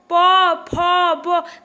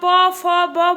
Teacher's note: जब आप प, फ, ब बोल रहे हैं तो आपके ओठ इसमें आपस में चिपक रहे हैं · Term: ओष्ठ